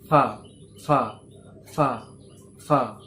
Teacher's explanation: নিচের ঠোঁটটা উপরের দাঁতের নোকে টাচ হয়ে উচ্চারণ হয় ফা